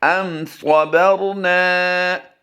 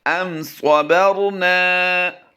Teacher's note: اس وقت آپ اپنی اسکرین پر جو دوسرا لفظ دیکھ رہے ہیں ام صبرنا، یہاں پر بھی را ساکن سے پہلا حرف با ہے، تو یہاں پر بھی زبر آئی ہے، با پر زبر ہے، اس لیے ہم اس کو را کو بھی پر پڑھیں گے ام صبرنا۔ نون الف زبر نا ہم نے اس لیے کھینچا ہے کہ یہاں پر الف مدہ کا قاعدہ ہوتا ہے، تو یہاں پر ہم نے لمبا کر کے پڑھنا ہے ام صبرنا۔